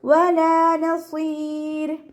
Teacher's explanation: മദ്ദക്ഷരത്തിൽ നമ്മൾ സുക്കൂനായിട്ടാണല്ലോ പരിഗണിക്കുക. അപ്പോൾ റോക്ക് സുക്കൂന്, മുന്നേ സുക്കൂന്, അതിൻ്റെ മുന്നേ ഉള്ള അക്ഷരത്തിന് കെസ്റ വന്നാൽ നമ്മൾ റോയിനെ ലൈറ്റ് ആക്കിയിട്ടാണ് വഖഫ് ചെയ്യുക